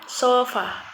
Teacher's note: vowel C is our is in a more Central position jadi lidah kita itu ada di lebih tengah bagian tengahnya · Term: Central vowel